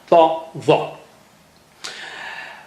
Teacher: Even the shape has thick tongue there to show you that ta and the are very thick and high sounding